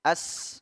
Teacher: huruf sin berdesis dia paling terdengar huruf Sin itu ya namanya desisan itu paling terdengar suaranya ketika di di speaker · Ada desisan dia punya sifat saofir juga huruf Sin mendesis